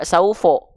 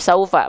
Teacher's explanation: kalau dia ee keluarnya vokal a maka dia huruf yang tipis